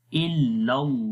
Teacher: لام کو بھی لمبا کریں گے، اس کے اوپر کھڑی زبر ہے. پہلے والے لام کو نہیں موٹا پڑھیں گے، دوسرے والے لام کو خالی موٹا پڑھیں گے، کیونکہ گرین جتنے بھی کلرز آپ کو نظر آئیں گے ان کو آپ نے موٹا پڑھنا ہے.